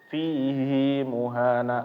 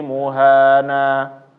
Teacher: Di semua tempat di Al-Qur'an fihi itu enggak ada dibaca panjang semuanya. Tapi di Al-Furqan dibaca panjang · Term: mat mubalaghah